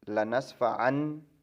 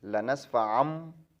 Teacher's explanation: تو یہ نون میم سے بدل دیں گے، مم ہو جائے گا، من، این کی ساؤنڈ نہیں نکلے گی، ایم کی ساؤنڈ نکلے گی، میم بعدی غنہ بھی ہوگا۔ · عین کی جو تنوین ہے اس کو میم سے بدل دیں گے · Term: اقلاب